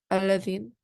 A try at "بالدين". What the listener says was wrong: And this is dal. There is no, this is not fatha. You are joining ba with this dal.